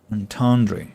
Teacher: the second syllable is stressed, not the last one.